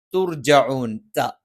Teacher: ത, നാവിന്റെ അറ്റം മേലെ മുൻപല്ലിന്റെ മുരടിലാണ്. പക്ഷെ താഴ്ഭാഗം അല്പം ഒന്ന് പല്ലിലേക്ക് ചേർന്ന് നിൽക്കും.